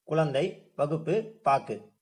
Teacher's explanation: இந்த கு அப்படின்ற எழுத்து வந்து இறுதியில வர்றப்போ தன்னுடைய 1 மாத்திரை அளவுக்கு பதிலா அரை மாத்திரை அளவுல ஒலிக்கும் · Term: குற்றியலுகரம்